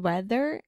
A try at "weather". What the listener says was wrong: Your TH is so good, meu amor, but for some reason in the word weather. That's a hard one for you.